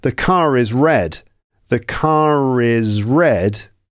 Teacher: you can actually hear that the R at the end of car is pronounced because it's followed by a vowel in the next word.